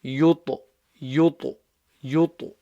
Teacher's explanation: The ta there is a kalkala letter. It's got a sukoon on it, so you have to bounce it.